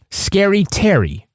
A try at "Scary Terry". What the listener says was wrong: You say it like it rhymes. It doesn't rhyme. Scary Terry.